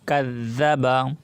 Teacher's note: বা জবর বা কাযযাবা কাযযাবা। জালের উপরে তাসদীদ আসছে, এজন্য আমরা জালটাকে দুইবার উচ্চারণ করব। একবার ডানে হরফ কাফের সাথে মিলিয়ে পড়ব, আর একবার জাল নিজে নিজে উচ্চারিত হবে।